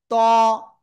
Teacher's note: জিহ্বার আগা, উপরের দুই দাঁতের গোড়ায় লাগিয়ে একটু মোটা আওয়াজে এক আলিফ টানিয়ে উচ্চারণ করেছি